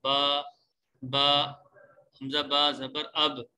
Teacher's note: با کا مخرج یہ ہے، ادائیگی کی جگہ یہ ہے کہ دونوں ہونٹوں کے جو تری والا حصہ ہے اس سے با ادا ہوتا ہے